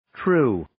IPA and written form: truː (True)